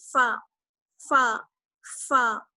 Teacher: فا کا مخرج ہوتا ہے اوپر والے جو دانت ہیں ہمارے ان کا استعمال کریں گے, ان کا کنارہ, اور نیچے والا ہونٹ جو ہے اس پر. نیچے والا ہونٹ پر ہمارے جب اوپر کے دانت لگتے ہیں تو وہاں سے ادا ہوتا ہے فا